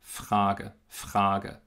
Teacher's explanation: das R im Wort Frage wird aufgrund des F dieses stimmlosen Konsonanten auch stimmlos. Es ist wieder ein Fall der progressiven Assimilation. · das R wird zu einem Ch. Und das ist im Prinzip nichts anderes als ein Achlaut.